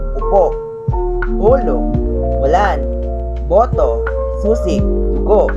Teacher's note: Ito ay U. Ang dila ay nakataas pero nakaposisyon sa likod ng bibig. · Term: Taas at nasa likod